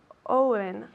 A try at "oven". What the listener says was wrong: Es un error muy común. Mucha gente dice oven, como una O, pero es a. Oven. Es más como una A.